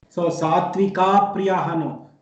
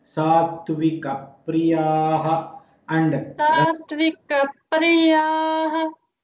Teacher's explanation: There is no elongation in ka.